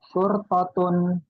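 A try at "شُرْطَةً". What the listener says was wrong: Polisi ya, surtatan ya, itu salah harokat.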